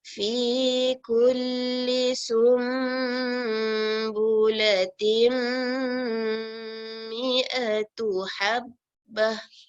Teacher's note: kita beri dengungnya lama 2 harakat, tim 2 harakat.